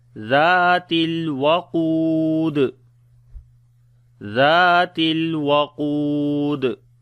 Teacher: on the dal we make qalqala · on the qaf we read heavy sound, then we long as well